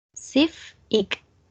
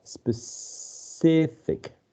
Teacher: I think that there are 3 syllables, and the primary stress is in the middle